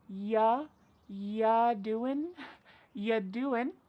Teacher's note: we're going to start this question with just you, which is reduced to y.